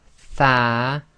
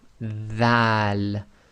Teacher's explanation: your tongue is just between your upper and lower teeth